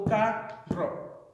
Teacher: you hear that the emphasis is more so on the second to last syllable instead of the first one, qualifying it as a palabra llana.